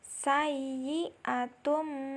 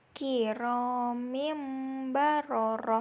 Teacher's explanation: menyuarakan nun sukun atau tanwin nya menjadi suara mim dengan merapatkan kedua bibir dan disertai dengan berdengung panjang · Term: iqlab